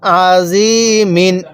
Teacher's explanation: আইনটা উচ্চারণের সময় গলার মধ্যে হালকা একটু চাপ দিবেন আইন জবর আ ইয়া জেরি মিম দুই জের মিন আজি মিন